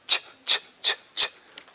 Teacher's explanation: It's a combination of stop and continuant.